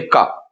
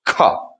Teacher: कम वायु अल्प प्राण, ज्यादा वायु महाप्राण